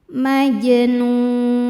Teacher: Maka jimnya ini dipantulkan dengan pantulan yang kecil. Majnun saat berhenti di nun hukumnya adalah mad arid lisukun. · Wala majnun, maj, jimnya dihukumi qalqalah sugro karena ada huruf jim yang sukunnya sukun asli dan berada di tengah bacaan, maka jimnya ini dipantulkan dengan pantulan yang kecil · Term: qalqalah sugra